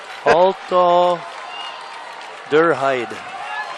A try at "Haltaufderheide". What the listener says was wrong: Halter, forgot the F in there.